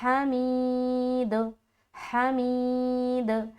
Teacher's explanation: دال کے اوپر رکتے سمے ہم قلقلہ کریں گے، کیوں، کیونکہ دال حروف قلقلہ میں سے ہے